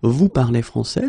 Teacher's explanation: we can keep the same order, we just need to raise the voice at the end